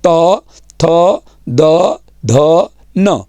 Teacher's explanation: उसके अलावा त थ द ध और न, ये दांतों पे आते हैं। जरा ख्याल करेंगे, ऊपर के दांतों पे टच हो रहे हैं। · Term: दंत्य